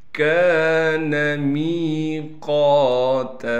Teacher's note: کان میقاتا، کاف کے بعد الف ہونے کی وجہ سے کاف کو ایک الف کی مقدار کھینچیں گے، میم کے بعد یا مدہ ہونے کی وجہ سے میم کو بھی ایک الف کی مقدار کھینچیں گے، قاف کے بعد الف ہونے کی وجہ سے قاف کو کھینچنا بھی ہے اور قاف کو موٹا کر کے پڑھنا ہے